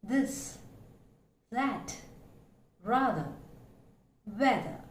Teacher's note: It is a voiced consonant, dental fricative. And as you can hear, the audible friction along with the vibration.